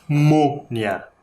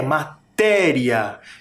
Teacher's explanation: Um acento é nasal, parece que sai pelo nariz o som.